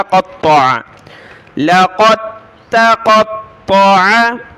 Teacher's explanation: آگے ہے لام زبر لا، قاف کو ملایا تا کے ساتھ، دال کو نہیں پڑھنا، لقد، تا کو سخت کیا، لقد، اس کے بعد قاف کو بڑی طا کے ساتھ ملایا، قطع، قطع، لقد، تا باریک، لقد قطع، اس کے بعد قاف طا ان کو موٹا پڑھنا ہے، طا کو بھی عین کو گلے سے نکالا